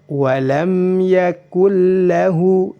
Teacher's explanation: tanpa ditahan dua harokat, cukup dimasukkan saja tanpa ada tekanan atau ditahan